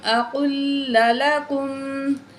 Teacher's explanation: یہ بڑی قاف ہے، اس کو جو ہے موٹا کر کے پڑھیں گے ہم، اور لام ساکن ہے، اس کو چھوڑ دیں گے۔